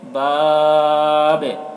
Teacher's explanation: با میں قلقلہ ہوگا کیونکہ وقف کی وجہ سے با کی زیر جو ہے وہ سکون سے بدل جا رہی ہے، اور با حروف قلقلہ میں سے ہے اس وجہ سے با میں قلقلہ ہوگا، باب، اس طرح۔